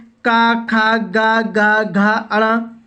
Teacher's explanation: का वर्ग का उच्चारण स्थान मैं आपको बताऊं तो ये कंठ से है। आपका कंठ से, जब कंठ ही चलेगा, आप का बोलेंगे तो कंठ चलेगा, ओठ, दांत ये आपके कुछ भी नहीं चलेंगे।